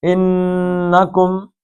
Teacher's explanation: نون انکم زبان کو تالو سے لگا کے کھینچنا ہے، انکم لسارقون، کاف کو موٹا پڑھنا، یہ دو حرکتیں تھیں لیکن نون ساکن ہو گیا آیت ختم ہونے کی وجہ سے، تو اس لیے 5 حرکتیں۔